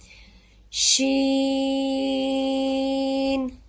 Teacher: اس کو ہم 5 الف جتنا لمبا کر کے پڑھیں گے۔